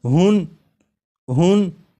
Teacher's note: جب ہا کو پڑھیں گے تو آخر میں نون ساکن کی آواز آئے گی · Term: تنوین